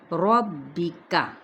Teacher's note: کاف کو باریک ادا کریں گے